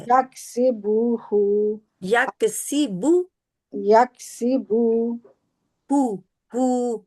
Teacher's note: बू को खींचना नहीं है, इसके आगे वाव नहीं है